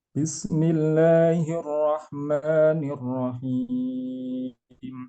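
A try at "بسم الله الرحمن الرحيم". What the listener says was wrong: Sin-nya dialirkan dikit lagi, Pak.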